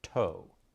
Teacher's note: teeth meet the roof of your mouth in the upward position air coming from the lungs is blocked and then systematically released when the tongue moves downward say the word toe and you will feel that motion toe · the tongue moves up in the mouth with the tip of the tongue striking the dental Ridge that's where the teeth meet the roof of your mouth in